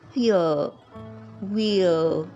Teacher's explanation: in the British pronunciation, the r sound, it seems like it is silent.